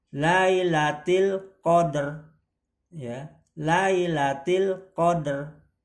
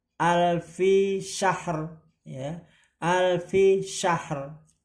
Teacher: Nah ini apabila huruf terakhirnya huruf hidup ya tadi, dan huruf sebelumnya bersukun, huruf sebelumnya ini bersukun ya, ini bersukun, maka huruf terakhir disukunkan, ro-nya disukunkan dan dibacanya hanya sebagian.